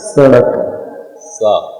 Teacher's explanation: हमारी जीभ जो है नीचे के दांत की पंक्ति में टच होती है, सड़क सा बोलो। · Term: दंती सा